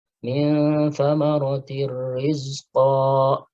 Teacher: Nah, ini idgham bila gunnah, ya. Tanwin kasrah ketemu ra, ya. Jadi tidak didengungkan, ya. Idgham bila gunnah.